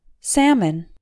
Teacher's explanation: the L is silent and the second syllable M o n sells like the min in vitamin the stress is on the first syllable · The first syllable, S-A-L, sounds like the sa in sample. The L is silent. And the second syllable, M-O-N, sounds like the min in vitamin.